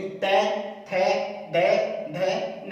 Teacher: हमारी जिह्वा हमारे दांतों को स्पर्श कर रही है